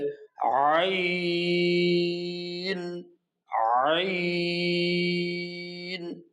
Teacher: হলকের মধ্যখান হইতে গলাকে চাপিয়ে চার আলিফ টেনে পড়তে হবে